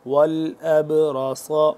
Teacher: وأبرئ الأکمہ والأبرص، والأبرص، را موٹا صاد موٹا، حمزہ با زبر اب، با جب ہو رہا ہے اس کے اوپر جزم ہے، با ساکن ہو رہا ہے تو اس کو ہم قلقلہ کریں گے